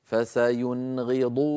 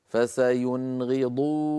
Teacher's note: مثال الذي بعده حرف الغين كما نرى فسينغضون، نون ساكنة بعدها غين لا زيادة في زمن النون